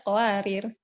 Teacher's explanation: Qawariro yang kedua, baik wasal maupun wakof, dia hilang alifnya.